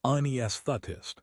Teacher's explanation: It is anesthetist. The stress is on the second syllable. You essentially have to stick your tongue out for the th and then pull it back sharply for the tist.